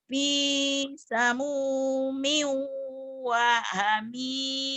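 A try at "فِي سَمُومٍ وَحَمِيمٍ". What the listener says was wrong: Pendek. Wah Hamim gitu Wah Hamim.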